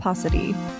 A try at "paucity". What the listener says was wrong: Okay, you don't hit the T super hard, apparently.